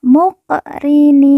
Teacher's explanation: karena di atasnya terdapat harakat u terbalik W kunna Lahu muqrinin qof sukun kita baca pantul karena merupakan huruf Qalqalah muqrinin lalu ni kita baca panjang du EMP atau en harakat · Qaf sukun kita baca pantul karena merupakan huruf qalqalah.